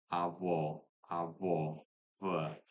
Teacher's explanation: I'm going into sort of a not uh, labiodental v, which is lip and tooth. I'm going bilabial approximate, so both lips